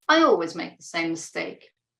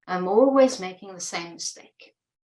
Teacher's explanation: notice the difference between the neutral, factual intonation of, I always make the same mistake, okay? And the more emotive, emotional way of saying, I'm always making the same mistake.